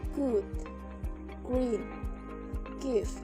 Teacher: air is briefly prevented from leaving the vocal tract when the back of the tongue lifts and presses against the soft palate at the back of the mouth